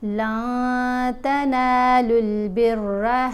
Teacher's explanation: نون کی آواز کو ناک میں چھپا کر پڑھنا ہے، کیونکہ نون ساکن کے بعد تا ہے، تا حروف اخفا میں شامل ہے۔